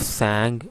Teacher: because this is pronounced through velar position, so therefore it is called velar closure.